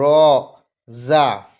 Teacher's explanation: মানে সামনের ওপরের 2 দাঁত এবং নিচের 2 দাঁত, মানে জিভের উপরের দাঁতের পাটি এবং নিচের দাঁতের পাটি একসাথে লাগিয়ে জিভের আগা সামনের উপরের এবং নিচের দাঁতের আগার সাথে লাগাতে হবে।